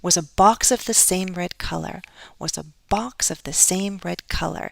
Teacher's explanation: Box, same red color, but more stress on color.